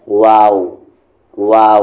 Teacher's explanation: पढ़ना है तो गांव में आपको होंठ को राउंड रखना है लिप्स को राउंड रखना है ऊपर के दांत के सामने वाले ऊपर के दांत को नीचे के लिप्स में टच नहीं करना है · ہم دونوں ہونٹوں کو گول کرتے ہیں تب واو کا مخرج ادا ہوتا ہے